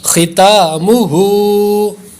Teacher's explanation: خا حروف مستعلیہ ہے پر کریں گے. تا پر کھڑی حرکت ہے، ہا کے اوپر بھی کھڑی حرکت ہے، دو کھڑی حرکات ہے اس لیے دونوں کو لمبا کریں گے برابر